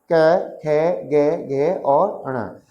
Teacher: ये जो 5 वर्ण हैं कैवर्ग के, इनका उच्चारण स्थान क्या है मित्रों? कंठ है